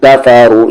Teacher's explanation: را ہیوی اور کھینچیں گے 3 سے 4 حرکت کے ایکول